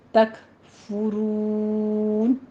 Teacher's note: میم ساکن کا قاعدہ اظہار شفی کریں گے، تک فرون میں کاف کے اوپر ہمس کریں گے اور فا کے اوپر ضمہ ہے، ہونٹ گول کر لیجئے